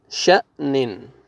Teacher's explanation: شین زبر، پھر دیکھیں حمزہ کو مجزم آ رہا ہے، جھٹکے کے ساتھ پڑھیں گے، شین زبر حمزہ جزم ش، نون دو زیر نن، شأنن۔